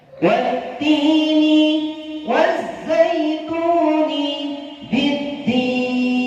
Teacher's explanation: ketika al bertemu matahari, alnya tidak kelihatan, maka disebut masuk idgham ya, namanya idgham syamsiyah gitu.